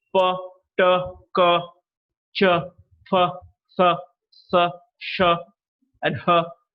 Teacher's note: of the voiceless sounds the vocal cords a he'll depart and when the air passes through the glottis there is no vibration in the vocal cords